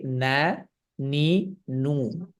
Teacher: খেয়াল করে দেখেন যদি আমরা নুনকে উচ্চারণ করি না নি নু শুধুমাত্র দম্মার ক্ষেত্রে আপনার কি হচ্ছে দুই ঠোঁটটা গোল হচ্ছে